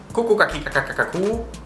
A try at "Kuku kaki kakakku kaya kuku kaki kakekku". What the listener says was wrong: Yeah. So no pause.